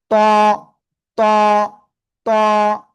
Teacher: জিব্বার আগা, উপরের দুই দাঁতের গোড়ায় লাগাবো, লাগে একটু মোটা আওয়াজে আমরা এটা উচ্চারণ করব।